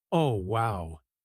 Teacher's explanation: let your voice go up a little bit, Oh wow, it sounds genuinely happy